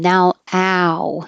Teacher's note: you have to start open ow and then round your lips